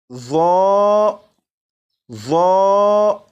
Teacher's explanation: اسی طرح اس حرف کو بھی سیٹی کی آواز کے بغیر پڑھیں گے، لیکن اس میں اضافہ یہ کریں گے کہ اس حرف کو پر یعنی موٹا بھی پڑھیں گے، کیونکہ یہ حرف حروف مستعلیہ میں سے ہے · اس حرف کو بھی سیٹی کی آواز کے بغیر پڑھیں گے، لیکن اس میں اضافہ یہ کریں گے کہ اس حرف کو پر یعنی موٹا بھی پڑھیں گے، کیونکہ یہ حرف حروف مستعلیہ میں سے ہے، اور آپ کو معلوم ہے کہ حروف مستعلیہ کو ہر حالت میں پر یعنی موٹا پڑھتے ہیں، جیسے ظا، ظا۔